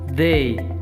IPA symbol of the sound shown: ð